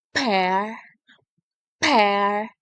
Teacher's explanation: This pair of words demonstrate how the single difference in a voicing between the p, p is a voiceless made with the vocal folds open, allowing the free passage of air across the glottis